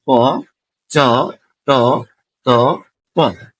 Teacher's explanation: তাহলে অঘোষ অল্প প্রাণ, এই যে ধ্বনিগুলো এখানে দেওয়া আছে সূত্রে ক, চ, ট, ত, প, এগুলো হচ্ছে অঘোষ অল্প প্রাণ